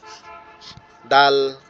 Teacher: দালের যে উচ্চারণ, এটা হচ্ছে আমাদের জিহ্বার আগাটা উপরের যে দুইটা দাঁত আছে এটার গোড়ায় লাগবে, ঠিক আছে? আওয়াজটা একটু নরম হবে, দাল এরকম হালকা আওয়াজ হবে।